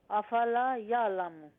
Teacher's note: افلا یعلم میں لام کو لمبا کرنا ہے الف مدہ کی وجہ سے